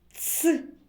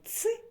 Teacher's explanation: звук ц твердий а ц м'який